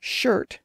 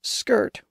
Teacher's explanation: the Anglo-Saxon words were often pronounced with a sh sound, where the Viking version was pronounced with a sk sound